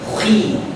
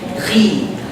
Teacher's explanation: kasra has to be kasra. Don't say khi like this heavy way. It has to be softer a little bit.